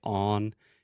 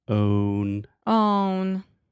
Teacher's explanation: You almost say on. You really have to have the O sound, that long moving vowel. Own. Own.